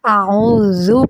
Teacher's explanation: ذال ادا ہوتا ہے جب آپ کی زبان کی نوک سامنے والے دانتوں کے کناروں سے ٹچ ہوتی ہے